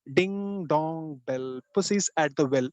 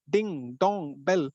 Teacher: stress count don't bother about the number of syllables here because each and every word is more of a stressed word